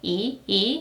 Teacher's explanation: E is a subject particle and it starts with a vowel. I mean, there is a consonant iung, but iung has no sound when it is at the very beginning of the syllable. So in Korean language, it is considered that it starts with a vowel.